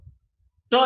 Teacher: It's the plosive. So ta is a voiceless, alveolar, plosive. This is the three-term label.